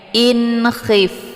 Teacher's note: Ini dinamakan dengan izhar halqi ataupun hakiki. Cara bacanya nunnya dibunyikan secara jelas atau jelas bunyi n-nya. In khif. Jadi tidak perlu ditahan, cukup ditekan saja.